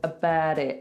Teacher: he turns the T into a D, that's extremely American.